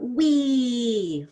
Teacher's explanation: when we have the E at the end of a word, wow, it's really stretched out. Wee, like lots of E.